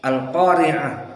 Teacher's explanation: Dari segi tajwid secara umum al-qari'ah, maka ta al-marbutah dibaca dengan ha